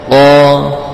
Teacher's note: Kemudian akhiran yang terakhir adalah huruf qaf. Ya, huruf qaf adalah huruf yang keluar dari bagian pangkal lidah dengan langit-langit yang lunak, dengan sifat jahar, ya, syiddah, isti'la, infitah.